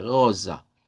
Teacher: debemos hacer sonar la R uvular y la S vibrante